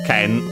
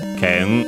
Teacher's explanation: The accent can't stay, as in fall after the moraic n, the final n, and so if it were an accented word like it is, if it is an accented word like it is, the accent is on the ke